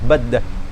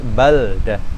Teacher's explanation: Harus diizharkan, enggak boleh diidghamkan. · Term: wujubul izhar